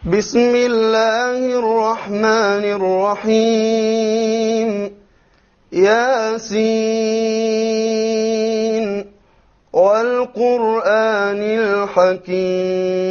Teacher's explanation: So we see he did a mad of 5 on Al-Hakim.